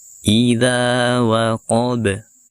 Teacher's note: Kemudian yang terakhir ada huruf ba yang disukunkan. Huruf ba termasuk huruf qalqalah ketika dia sukun, sehingga kita pantulkan huruf ba-nya